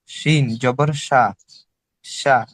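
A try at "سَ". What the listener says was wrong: আপনি শিন বলছেন কেন এটাকে? এখানে তো একটা শিনও নেই। সিনকে শিন বলেন কেন? শিনের উপরে 3 নক্তা আর সিন নক্তা ছাড়া। সিন, সিন। আর যেটা নাকি 3 নক্তা হলো শিন, মোটা করে শিন। এরকম যেরকম বাঁশির মতো আওয়াজ হয়, সিন, সিন। সিন জবর সা।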